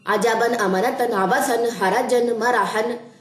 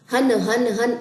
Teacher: ہن ہن ہن، یہ ساؤنڈ کراس، یہ نہیں ایکسیپٹیبل. اس میں وائبریشن، جھٹکے لاسٹ پہ تنوین کے نہیں آتے، بلکہ آپ نے نون کی ساؤنڈ کو واضح کرنا ہے، جیسے ہم نے تنوین کو بنایا ہے جس ایک لیٹر سے.